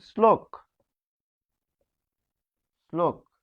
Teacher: ল থাকলে সেই তালবস্য কি হবে দন্তস এর মতো এখানে উচ্চারণ হবে